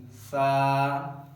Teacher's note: سا پڑھتے ہوئے زبان سامنے کے جو دو دانت ہیں یہ ان کے پیچھے زبان کی نوک لگے گی